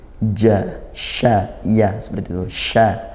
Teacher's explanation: Batasya shin ya disempurnakan makhrajnya dari tengah lidah seperti jim.